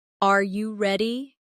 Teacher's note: For example, when a native speaker asks a yes or no question like, "Are you ready?" The pitch of their voice goes up at the end.